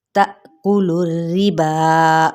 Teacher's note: تأکلوا الربا، اب یہاں پہ تا حمزہ ساکنہ، یہاں پہ جھٹکا دیا جائے گا، تا پڑھیں گے، ٹھیک ہے، اور لام کی پیش کو ڈائریکٹ ہم راس کے ساتھ پڑھیں گے، لیکن را تشدید کیا ہے، نیچے کسرہ ہے یعنی زیر ہے، تو باریک پڑھا جائے گا